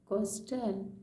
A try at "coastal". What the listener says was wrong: Coastal, very good, coastal.